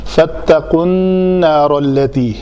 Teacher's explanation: نون کے اوپر شد ہے تو اس کا غنہ کریں گے دو حرکت کے برابر